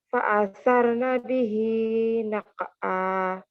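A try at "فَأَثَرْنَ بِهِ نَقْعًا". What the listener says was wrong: Naqo kurang dalam. Nah, koknya itu pantulannya tetap di tempat kof. Naqo.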